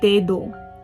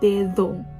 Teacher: When the D is in the middle or when it's at the end, you pronounce it as a TH rather than an actual D.